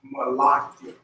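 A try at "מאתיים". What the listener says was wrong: You're still saying la. You're throwing one of these in there. Don't take that up. Don't take that up. So ma'athi.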